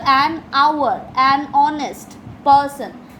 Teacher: So the h is silent, and the next sound that we produce is o. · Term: silent h